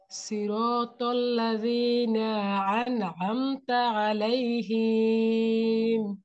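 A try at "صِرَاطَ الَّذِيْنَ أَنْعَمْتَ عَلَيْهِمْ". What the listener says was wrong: হিম, কোনো টান নাই, হিম হিম এভাবে পড়তে হবে।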